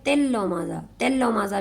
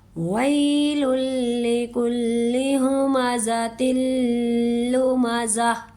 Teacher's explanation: ہمزہ تلمزہ، ہمزہ، ہا کو سینہ سے نکالیں گے